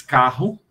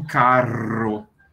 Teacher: a gente diz carro como se fosse uma aspiração ao passo que os espanhóis dizem caro com a língua vibrando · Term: r dobrado